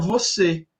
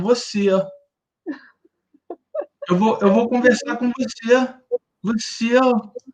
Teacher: Essa vogal, ela fica maior ainda. Ela é mais estendida e ela tem um ditongo, assim.